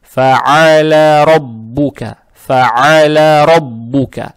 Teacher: Далее буква «лам» с фатхой. Фатха приобретает оттенок «я» и фатху не тянем.